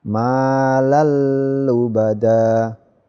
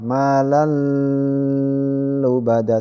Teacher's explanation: jadi fathah tanwin nya ini masuk ke huruf lam tetapi tidak mendengung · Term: idgham bi la guna